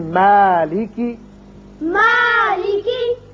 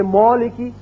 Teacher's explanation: اگر کوئی پڑھ دے مولکی تو یہ غلط ہے. کیوں کہ میم جو ہے یہ باریک پڑھا جانے والا حرف ہے، اس کی وجہ سے الف بھی باریک ہوگا